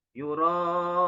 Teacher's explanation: Ya, di situ ada mad wajib mutasil. Jadi ada huruf hamzah bertemu dengan huruf mad tabi'i di dalam satu kalimat. Dan panjangnya 4 sampai 5 harokat atau 2,5 alif.